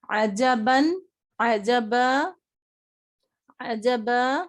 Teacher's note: عجبا میں ہم نے تنوین وقف کر دی تو ہم نے کیا پڑھا؟ عجبا، الف مدہ پڑھا